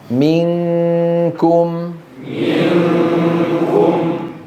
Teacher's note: الكاف نغلق المخرج تماما